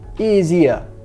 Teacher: Então a gente está engolindo os H's aqui, esses R's, também no começo da frase, tá bom?